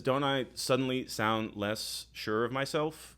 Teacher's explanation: every sentence sounds like a question or even words within the sentence uh all have an upward lilt to them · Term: up speak